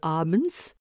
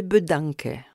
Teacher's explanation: Le A transcrit le A long de abends comme le A bref de bedanke.